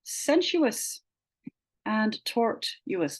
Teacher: there's a syllabic U in Latin-derived words as well, like in sensuous and tortuous